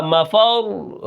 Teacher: اور اب اگر میں وقف کروں گا اس کے اوپر رکوں گا، مفر را کو میں موٹا پڑھوں گا اور تشدید کو بھی میں ادا کروں گا، کیونکہ را ساکن ہے اس سے پہلے زبر ہے تو یہ را موٹی ہوگی